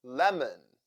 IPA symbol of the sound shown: ə